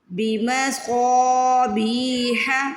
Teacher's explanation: بمصابیح، بی میں دیکھیے زیر کے بعد یا ساکن ہے، بی کو کھینچنا ہے، پھر ح کی آواز حلق سے نکالنی ہے۔ بمصابیح، پہلے صاد کو سٹریچ کر لیں پھر بی کو کر لیں۔